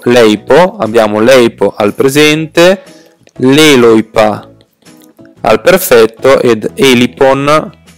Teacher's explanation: Sono tre tempi diversi. Notiamo che abbiamo ei al presente, oi al perfetto e i all'auristo. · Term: apofonia indoeuropea